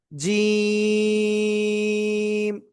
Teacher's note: জিহ্বার মধ্যখান তার বরাবর উপরে তালুর সাথে লাগাবো, লাগিয়ে আমরা 3 আলিফ টেনে পড়বো। 1 2 3 জিম। এটা একটু সহজ অক্ষর, শক্ত আওয়াজ হবে, কিন্তু শক্ত আওয়াজ।